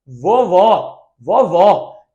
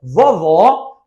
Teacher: O primeiro O é átono, o segundo O é tônico. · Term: vogal tônica